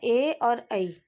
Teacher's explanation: अब कंठ तालु से उच्चारित होने वाले ये हैं ए और ऐ। इनको कंठ तालव्य ध्वनियाँ कहते हैं।